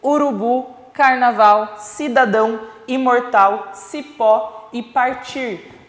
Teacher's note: todas essas palavras possuem a última sílaba como sílaba tônica como a sílaba de maior intensidade sonora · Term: oxítonas